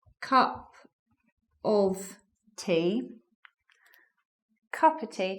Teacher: colloquial relaxed spoken English do you want a cup of tea so the of joins the words before so remember it's cup of tea cup of tea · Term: elision